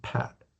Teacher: in the word pat, you can feel quite a bit of puff of air on your hand